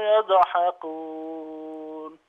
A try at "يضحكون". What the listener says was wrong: يضحكون يضحكون لا لا تقلقل، يضح يضح